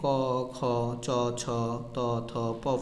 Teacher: যেগুলো উচ্চারণে স্বরতন্ত্র কম্পিত হয় না সেগুলো হলো অঘোষ ব্যঞ্জন